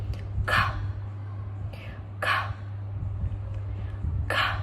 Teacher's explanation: In order to pronounce K, we can back of the tongue is right against the soft palate. We don't use the throat or the vibration from the throat.